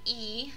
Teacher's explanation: you can feel that the tongue comes up so it's high in the mouth and then it's also a little bit more forward advanced and our lips are not rounded they're actually very flat so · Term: high front vowel